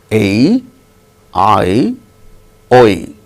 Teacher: these 3 start from different places, but end up with E sound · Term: diphthongs